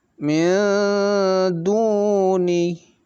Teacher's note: Jadi mil dibaca samar, nun sukun atau nun matinya, kemudian dikasih dengung lebih banyak sedikit dibanding ikhfa yang lainnya karena dia termasuk huruf dari ikhfa kubro.